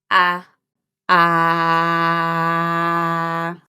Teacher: the tongue is relaxed in the middle of an open mouth. We can see the tongue, but it's not pushed forward. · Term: Italian a sound